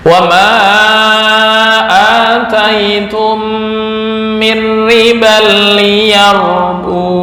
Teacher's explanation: menetapkan alif secara tulisannya kelihatan, tapi secara pengucapan alif tersebut dibuang baik dalam keadaan wasol maupun waqaf